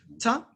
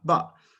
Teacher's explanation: ta is alveolar and ba is bilabial